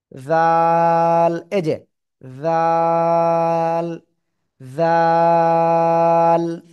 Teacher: জিহ্বার আগা, উপরে দুই দাঁতের আগায় লাগাবেন, লাগিয়ে উচ্চারণ করতে হবে চিকুন আওয়াজে।